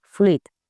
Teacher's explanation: hem de fer el diftong, hem de pronunciar el diftong, la U i la I, tot seguit